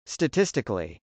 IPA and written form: stətˈɪstɪkəli (statistically)